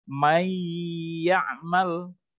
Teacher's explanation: Tetapi membacanya may ya'mal, nunnya hilang, masuk ke huruf ya, huruf sesudahnya. May ya'mal, dan berdengung, di situ berhenti atau panjangnya kira-kira 2-3 harokat, 2 ketukan. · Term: mendengung